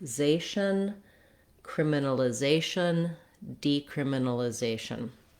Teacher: we have the stress on the second to last syllable, zay.